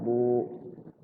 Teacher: Ba ada alifnya sukun, ba-nya jadi panjang. Ba berbaris doma. Ada wawunya sukun di situ jadi panjang.